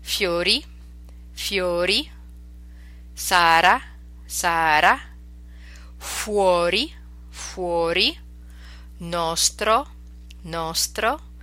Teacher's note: here's the other R sound it's more of a tap not a roll · you hear that's just a little tap behind your front teeth. It's not a roll or a trill.